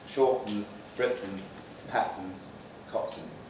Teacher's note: all these TN sequences here will be glottal stop plus syllabic N